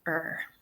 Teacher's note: in the Irish accent we pronounce our Rs pretty heavily